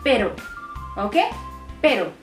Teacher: I am trying to keep my tongue flat. I'm not rolling it at all. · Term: single R